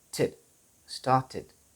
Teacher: tid, id. So there is a short I in between the t sound and the d sound.